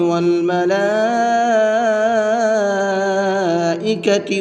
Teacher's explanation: والملائکۃ، لام کے اوپر یہاں بھی بڑا مد ہے، تو اس کو بھی 4 سے 5 الف کی برابر کھینچ کر کے پڑھیں گے